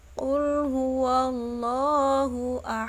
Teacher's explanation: lam jalalah tafkhim atau tebal karena terdapat huruf lam dalam lafadz jalalah yang sebelumnya didahului oleh huruf wa berharokat fathah